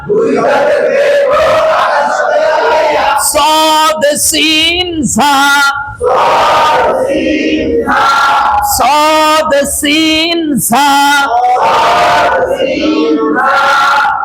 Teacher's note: 12 নম্বর মাখরাজ জিহ্বার আগা সামনের নিচের দুই দাঁতের পেট ও আগার সঙ্গে লাগাইয়া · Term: হুরুফে সফির